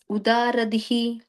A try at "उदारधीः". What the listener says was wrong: Udaradhihi, long E at the end.